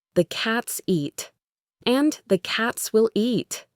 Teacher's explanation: they both have two stressed words, cats and eat